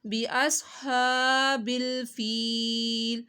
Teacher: بی ہا کو حلق کے درمیان سے اور لمبا بھی کرنا ہے آپ نے